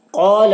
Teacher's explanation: قال القاف حروف مستعلیہ میں سے ہے، اسے پر پڑھنا ہے، اور یہاں پر الف سے پہلے زبر ہے تو الف مدہ، اسے ایک الف کے برابر کھینچ کر پڑھیں گے